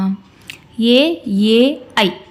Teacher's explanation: ಕಂಠತಾಲವ್ಯ ಅಂತಂದ್ರೆ ಕಂಠ ಮತ್ತು ದವಡೆಯ ಸಹಾಯದಿಂದ ಉಚ್ಚರಿಸಲ್ಪಡುವಂತ ಅಕ್ಷರಗಳನ್ನ ಕಂಠತಾಲವ್ಯ ಅಂತ ಕರೀತೀವಿ